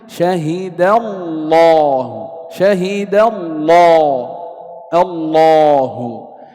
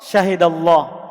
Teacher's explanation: Jika ada lafaz Allah, kemudian sebelumnya adalah fathah, maka dia dibaca tebal, lamnya.